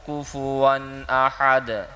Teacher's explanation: حمزہ یعنی الف کے اوپر زبر ہو، زیر ہو، پیش ہو تو اس کو الف نہیں کہا جاتا بلکہ حمزہ کہا جاتا ہے. تو یہاں پر حمزہ آ رہا ہے تو اس وجہ سے ہم غنہ نہیں کریں گے بلکہ اظہار کریں گے